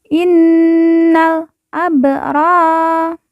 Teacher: ro kita baca panjang dua harakat karena di depannya terdapat Alif · Lalu ba sukun kita baca pantul karena merupakan huruf qalqalah.